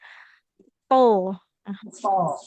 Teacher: huruf th ini huruf yang diucapkan dengan menaikkan pangkal lidah ya. Jadi, tebal hurufnya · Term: huruf tebalnya